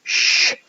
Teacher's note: sh means that it involves moving your tongue slightly back from the alveolar ridge